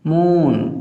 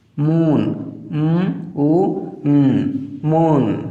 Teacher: তারপরে মুন। খেয়াল করো এখানে যে ডাবল ও রয়েছে এই ডাবল ওর জন্য লং ভাওয়েল সাউন্ড উ হয়েছে, মুন, উ মুন। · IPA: uː